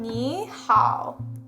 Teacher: And there's also, if you've learned Chinese before, there's that tone sandy where it's like the first two, if you see a third tone twice in a row, like 你好, it goes from a higher tone, 你好. Ni is a third tone, but it switches over to a second tone from 你好 to 你好.